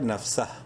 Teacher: نون فا زبر نف سین زبر سا ہا الٹا پیش ہو ایک الف برابر لمبا ہوگا ہا الٹا پیش کی وجہ سے. نفسہ اور وقفن ہا کی پیش اڑ جائے گی، سین ہا سے مل جائے گا نفسہ. واو زبر وا لام الف زبر لا ایک الف کے برابر لمبا کریں گے لام کو الف مدہ کی وجہ سے.